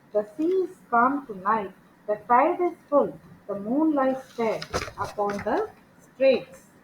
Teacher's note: these lines are highly regular with the reliable shift from unstressed to stressed creating a gentle rocking Motion